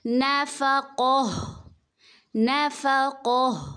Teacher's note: تا ہے، اس کو ہم ہائے ساکنہ میں بدلیں گے